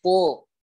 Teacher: huruf po ini termasuk huruf tebal karena pangkal lidahnya naik ya, naiknya pangkal lidah. Begitu. Terus bedakan dengan huruf ta, jangan sama huruf ta dengan huruf po.